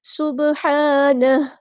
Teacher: سین سیٹی ہم واضح کریں گے اور با ساکن پہ کلکلا ہوگا. ہا کو مستحل لیکن تھوڑا سے ادا کریں گے.